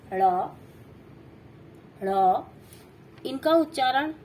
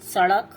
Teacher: फिर उसके बाद आता है व्यंजन का एक निम्न प्रकार है द्विगुण अतिरिक्त व्यंजन या उच्छिद व्यंजन। वो वर्ण जो 2 गुण वाले होते हैं, जिनका उच्चारण करते समय जीभ पलट कर वायु से बाहर निकलती है। अतिरिक्त व्यंजन 2 ही हैं, जिससे एक विशेष प्रकार की ध्वनि निकलती है।